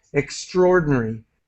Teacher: I usually do not pronounce the A here.